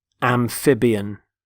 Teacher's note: Notice the stress on the middle syllable